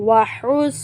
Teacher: یہ بڑا ہا ہے اس کی آواز حلق کے درمیانے حصے سے ادا ہوگی